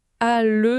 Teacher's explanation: La succession de la voyelle ouverte « a » et de la consonne latérale « l » oblige la langue à faire un mouvement presque contrarié. Ah oui, à le, ça fait comme un petit trébuchement dans la bouche.